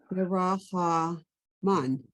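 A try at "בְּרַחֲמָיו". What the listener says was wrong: Mav. That doesn't go down. It stops. Barachamav.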